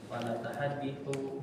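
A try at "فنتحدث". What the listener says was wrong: Bukan natahaditsu. Wa fanatahaddatsu. Natahaddatsu. Tahaddasa yatahaddatsu. Maka fathah semua fi'il ta mudhari'nya.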